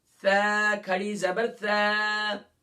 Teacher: ثا کو ہم نے مخرج پڑھا تھا top of the tongue and the inner ایج of front teeth, یعنی زبان کا کنارہ اور زبان کا سرا اوپر کے دانتوں کے اندرونی کنارے سے.